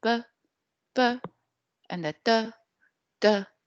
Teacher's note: B and D in Mandarin Chinese, they are unvoiced.